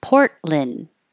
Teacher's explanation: you won't hear the T and you won't hear the D when your tongue goes up to the T for the port · when your tongue goes up to the T for the port hold it there and don't release